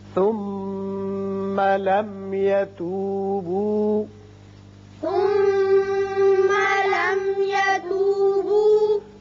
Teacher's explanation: یہ میم ساکن جو ہے یہاں اظہار شفوی ہوگا